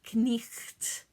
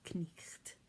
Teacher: in middle english you would pronounce every single consonant in that word